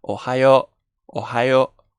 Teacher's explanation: la U lo que hace es que lo pone largo, pone la vocal larga, entonces no decimos Ohayo, decimos Ohayo, Ohayo, ¿de acuerdo?